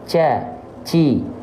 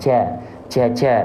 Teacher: Huruf jim itu punya sifatnya jahar. Dia nggak boleh keluar nafas, tapi dia tertahan nafasnya.